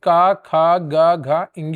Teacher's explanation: घ का उच्चारण स्थान कंठ होता है।